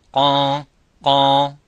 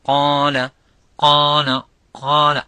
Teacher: And if I have that problem and I say, for example, qala, qala, qala, I feel that I blocked the nostrils and I blocked the nasal cavity. I did not let the air coming from there